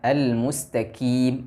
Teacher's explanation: menghanskan atau mengalirkan nafas udara pada huruf qaf yang perlu diingat huruf qaf bersifat jahar jadi tidak ada aliran nafas atau udara